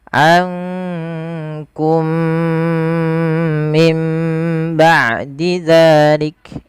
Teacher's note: mim yang pertama dimasukkan kepada mim yang kedua dan ditahan dengan 2 harokat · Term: idgham mimi